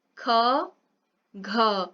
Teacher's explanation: ख और घ बोलने में जो हवा है वो ज्यादा उत्सर्जित हो रही है, तो उसको क्या बोलेंगे, महाप्राण बोलेंगे।